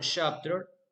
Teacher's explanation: In the word chapter, we make the stress on the first syllable. The first syllable shop will be pronounced louder than the last syllable term. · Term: word stress